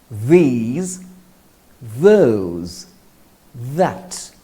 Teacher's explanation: The sound of the is voiced or hard and the vocal cords vibrate. To say it, place the tip of the tongue between the teeth, then blow air through the front of your top teeth.